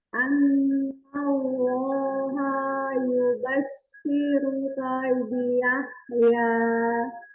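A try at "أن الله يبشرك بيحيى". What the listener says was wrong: Bagus, tapi kembali haknya kepanjangan. Anallaha ini haknya jadi panjang. Coba lagi.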